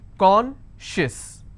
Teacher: And I will stress on con.